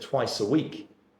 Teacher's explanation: when you said twice a week, I hear the twice linking together, beautiful connected speech